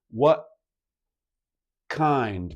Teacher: My tongue in casual connected speech immediately goes for the K position, but the stoppage of the airflow is actually at the glottis, at the vocal folds.